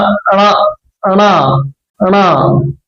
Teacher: మూర్ధన్యము అంగుడి సహాయంతో ఈ ముక్కు నుండి ఉచ్చరింపబడుతుంది